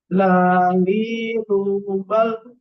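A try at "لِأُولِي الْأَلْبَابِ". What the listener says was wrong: coba sekarang agak dilemaskan sedikit, itu jangan ditekan. Lali, ulangi.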